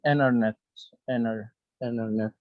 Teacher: T letter, in some words, when it comes after N letter, so it's a silent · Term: silent T